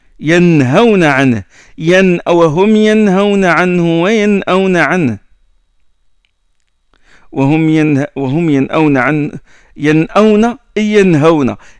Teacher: on prononce le noun, c'est-à-dire le bout de la langue il touche le haut. Il touche, c'est une occlusive, il touche le haut. · Il y a le nom suivi de la hamza, le nom suivi de la ha, on le prononce nettement. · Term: l'izhar